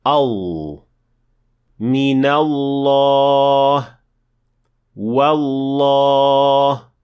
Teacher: اور ہم یہ بھی دیکھتے ہیں کہ حلق کا کوا پیچھے کی طرف دھکیلتا ہے جو آواز کو مزید پر اور موٹا بنانے میں مدد کرتا ہے